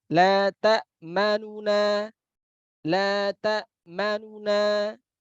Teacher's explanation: terdengarnya saja sedikit sekali ya terdengar harokat daripada dhammah pada huruf nun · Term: raum